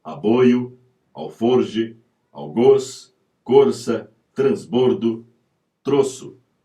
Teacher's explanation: o timbre fechado da letra ó tônica